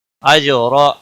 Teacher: جیم ساکن پر کلکلہ ہوگا، را زبر کی وجہ سے پر پڑا جائے گا.